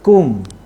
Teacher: mi mati yang ada tanda mati, tak boleh dengung